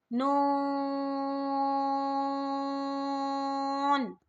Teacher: Next ہے، یہ بھی 2 نقطوں والا قوف ہے، اسے بھی موٹا پڑھیں گے، اور اس پر بڑی مد ہے، اس کو 5 علی کے برابر کھینچیں گے، قاف۔ نون پر بڑی مد ہے، نون کو بھی 5 علی کے برابر کھینچیں گے